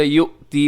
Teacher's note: یؤتی میں حمزہ ہے جو کہ بشکل واو ہے، اس حمزہ کو اپنے جھٹکے کے ساتھ ادا کرنا ہے